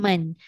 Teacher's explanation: Nun tu kan huruf yang keluar dekat lidah tapi dia pergi dekat hidung. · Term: dengung